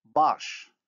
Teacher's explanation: The vowel A in baş is plus back, minus round.